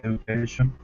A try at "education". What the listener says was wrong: The only small thing is this D sound. It sounds more like a J, so it would sound more like education. Education. education. Maybe like that. Education.